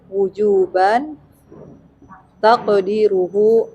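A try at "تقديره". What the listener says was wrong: Nah, panjangkan dalnya.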